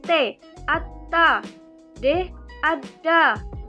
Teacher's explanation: Lalu fonem T dan D yaitu cara artikulasinya juga di plosif atau letupan. Lalu tempat artikulasinya di alveolar.